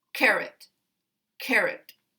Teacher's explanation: there's no schwa combat combat this one has this uh stress primary stress on the first syllable but the second syllable is weak and it contains a schwa sound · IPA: ə